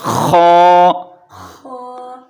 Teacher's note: خا کو ایک الف کے برابر کھینچ کے پڑھنا ہے اور خا کو موٹا کر کے پڑھنا ہے · خا ادا ہوتا ہے گلے کے اس حصے سے جو منہ کی جانب ہو